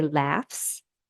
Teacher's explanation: so we hear the voiceless s